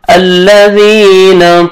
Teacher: ذال کو نرمی سے ادا کرنا ہے اور آپ نے کھینچنا ہے 1 سیکنڈ ایک الف کے برابر